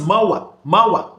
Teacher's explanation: You can see 3 vowel sounds gliding into each other, into one another.